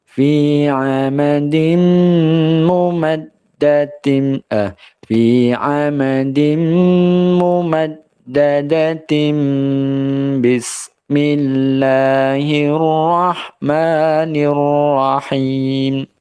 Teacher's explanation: yang tadinya n jadinya m, yang tadinya nun jadi mim. · Mad ini ada tasydid ya, yakni dengan ditekan dan ditahan. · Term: Iklab